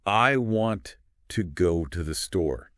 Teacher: You hear the strong beats on want, go, and store. The little words too, the are quick and unstressed.